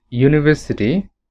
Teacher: when we pronounce the word university the word starts with the sound y not u